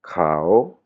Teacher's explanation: La prononciation courte, "Khao". La prononciation courte et intonation basse